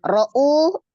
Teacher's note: Huruf hamzah yang dibaca 2 harakat dinamakan mad badal. Panjangnya sama dengan mad tabi'i ya, 2 harakat.